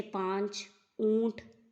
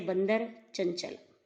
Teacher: अनुनासिक के उच्चारण में हवा मुख और नासिका दोनों से बाहर आती है, जैसे पांच, ऊंट, जबकि अनुस्वार में हवा केवल नाक से निकलती है, जैसे बंदर, चंचल।